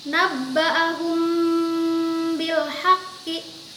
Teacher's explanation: samar disertai dengan ghunnah suara bacaannya tepat berada di bibir keduanya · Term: Ikhfa Syafawi